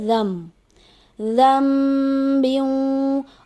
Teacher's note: یہاں پہ نون ساکن کے بعد با آ رہا ہے تو قاعدے کے مطابق اقلاب کا قاعدہ ہوتا ہے، تو یہاں پہ رال کو ہم ملائیں گے میم، رال کو میم کے ساتھ ملائیں گے، نون کو نہیں، اس کو رن نہیں پڑھا جائے گا، اس کو پڑھا جائے گا رم، رم بیوں۔